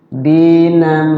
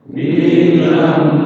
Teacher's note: Dinam sambil ditahan di mim. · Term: gunnah